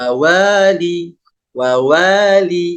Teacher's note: karena ini tanda panjang untuk harakat fathah maka dibaca Dua harakat cara mengamalkannya adalah diayunkan Wali wawali itu dua harakat ya Jadi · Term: 2 harokat